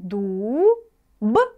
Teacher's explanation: первые два звука мы произносим на одном дыхании мы их не разделяем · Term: слог слияния